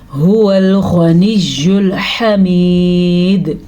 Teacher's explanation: ہا کا آپ نے دھیان رکھنا ہے اور دال پہ قلقلہ ہوگا کیونکہ اگر ہم یہاں پہ وقف کریں گے تو دال پہ جھٹکے کی کیفیت پیدا ہوگی